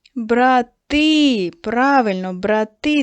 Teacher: Треба було наголос на и.